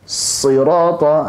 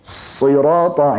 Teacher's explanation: Yang salah adalah ketika sirata, seolah-olah kayak bertasydid jadinya. Sirata, ini salah.